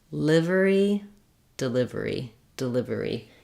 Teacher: because I'm stressing on the live, this first syllable is short and unstressed · You're really just wanting to make a reduced vowel and very short on that first syllable